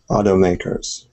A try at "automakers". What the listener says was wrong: All right. Excellent.